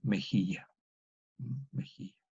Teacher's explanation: la J antigua evoluciona a la J moderna, que es la fricativa velar sorda · Tenemos la yod, la E y la eye. Por disimilación se pierde el sonido menos palatal, que es la E. Por eso el diptongo Y se reduce a I. Finalmente queda mejilla.